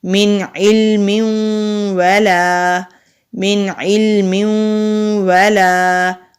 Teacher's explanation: ادغام کہتے ہیں ملا کر پڑھنے کو، اور غنہ کہتے ہیں ناک میں آواز لے کر جانے کو، یعنی کہ ملائیں گے بھی اور ناک میں بھی آواز لے کر جائیں گے، اس کو ہولڈ کر کے رکھیں گے۔